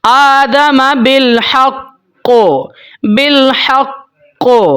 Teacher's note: مثال آپ کو دوں گا، یہاں پہ دیکھیں، نبا ابنی آدم بالحق، اب قاف حروف قلقلہ میں سے ہے، جب آپ اس کے اوپر وقف کریں گے تو قاف کے اوپر جب آپ نے وقف کرنا ہے تو مضبوطی کے ساتھ کرنا ہے اور قاف کے اوپر قلقلہ بھی ہوگا